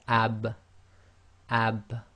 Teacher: this case the lips so so we have ab ab and you can feel the wet portion of your lips come together · we have AB again this is one of the echo letters you cannot complete it without separating the two parts of your mouth that come together or in this case the lips